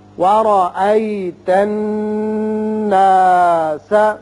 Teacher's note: را کے اوپر زبر ہے، جب زبر ہو تو را پر پڑھتے ہیں